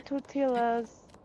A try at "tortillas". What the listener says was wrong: did you just pronounce the L in tortilla as a Hispanic person